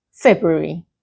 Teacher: you do not pronounce the R after the B.